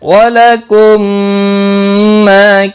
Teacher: میم ساکن کے بعد دوسرا میم آیا ہے، ادغام شفوی ہوگا، غنہ کے ساتھ پڑھیں گے · ما الف مدہ بھی ہے، ایک الف کے برابر کھینچ کر پڑھیں گے